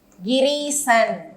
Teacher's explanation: இங்கு ஈ அமைந்து வருமொழியிலும் நமக்கு ஈ என்று அமைந்ததால் நெட்டெழுத்து நீண்டு கிரீசன், கிரீசன் என்று புணர்கிறது. எனவே தீர்க்கமாக நிலைமொழியில் ஆ ஆ, வருமொழியில் ஆ ஆ இ இ அமையும் பொழுது தீர்க்கமாக அதனுடைய நெட்டெழுத்து நீண்டு ஒலிக்கும்.